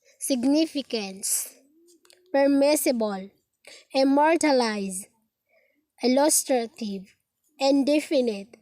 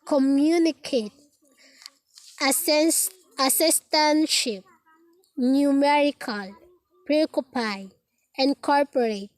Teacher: four-syllable words with the primary accent on the second syllable and secondary accent on the first syllable